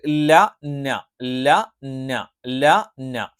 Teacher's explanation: ല ഉച്ചരിക്കുന്നതിന്റെ തൊട്ട് പിന്നിലായിട്ടായിരിക്കും ന എന്നുള്ള ഉച്ചാരണം ഉണ്ടാവുക.